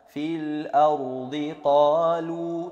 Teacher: qa itu ada mat asli lagi, panjangnya 2 harokat.